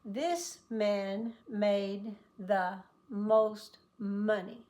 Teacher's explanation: lips together and hum. This is voiced, vibrate, but lips must always touch. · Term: the letter M